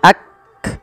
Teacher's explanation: Cara membacanya yaitu bacaan syiddahnya dulu yaitu kaf itu ditahan suaranya ak baru dikasih hames. Hames itu mengalirnya nafas. Maka yakfuru yakfuru.